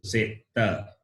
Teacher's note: Ta is the tongue touches the base of the upper teeth. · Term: dantya